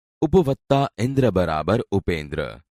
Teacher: અ અને હસ્વઈ ની સંધિ થતા એ બને છે જેમ કે ઉપશબ્દના પ અક્ષરમાં અ છે અને ઇન્દ્ર શબ્દનો પહેલો